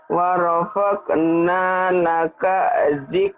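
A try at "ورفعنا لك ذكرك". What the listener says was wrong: Jangan warokokna, warofakna, titiknya satu. Jadi warokokna, bukan warokokna, warofakna. Warofakna laka zikraka.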